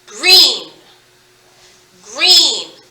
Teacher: in the word green gr like peanut butter and jelly sandwich you can still hear the g and the r but they are smushed together called a blend e e two e's so it's not a green e sound